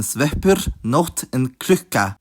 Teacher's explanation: for the formerly voiceless plosives, their gemination manifests as pre-aspiration, which is exactly what it sounds like- aspiration before the consonant